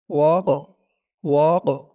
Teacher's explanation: কফের আওয়াজটা একটু ধাক্কা খাবে, কারণ কফটা হচ্ছে কলকলার হরফ